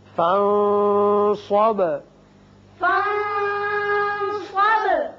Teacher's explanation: نون پر اخفا، با کی صفت قلقلہ